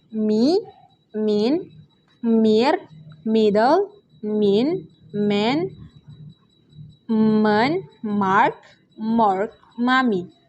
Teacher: voice bilabial nasal sound M